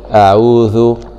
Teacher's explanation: مع مراعاة مخرج الذال طرف اللسان مع أطراف الثنايا العليا أعوذ.